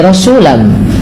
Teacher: Apa yang dimasukkan adalah bunyi suara tanwinnya kepada huruf setelahnya. Rasulan menjadi rasulam, sehingga terdengar bunyi suara huruf mim. Langkah kedua, karena ia bi gunnah disertai dengan gunnah, maka perlu ada penahanannya. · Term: idgham bi gunnah